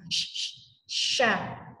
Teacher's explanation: Shin itu keluarnya dari tengah lidah kalau ini saya ibaratkan lidah, tengah lidah naik ke langit-langit.